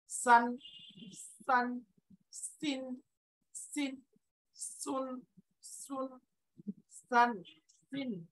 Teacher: এটার একটা সিফাত আছে, সিফাতটা হলো সফির, সফির মানে হলো চড়ুই পাখির মতো আওয়াজ হবে এই আওয়াজটা